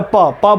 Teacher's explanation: वही हम आपसे बोलते, बोलिए प, मुंह खोल के प बोलिए तो नहीं बोल पाएंगे, बोल पाएंगे, नहीं बोल पाएंगे, क्योंकि प बोलते हैं तो हमारी ओठ एक दूसरे के ऊपर सटती है